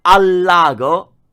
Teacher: quando io dico al lago sembra una parola